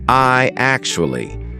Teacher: What we're going to put in the middle is a Y sound, so it becomes I actually.